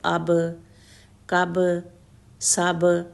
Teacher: دونوں ہونٹ ملتے ہیں اور پھر جدا ہو جاتے ہیں · اگر ہم با کو ساکن کریں تو بھی آپس میں ٹچ ہوں گے، دونوں ہونٹ ہمارے آپس میں ملیں گے اور پھر جدا ہو جائیں گے